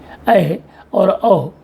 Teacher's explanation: ये वे स्वर हैं जिनके उच्चारण में मुख आधा खुला रहता है